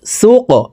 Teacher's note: সিন কফ পেশ সুক। কফ কলকলার হরফ, উপরের দিকে ধাবিত করে ধাক্কা দিয়ে উচ্চারণ করব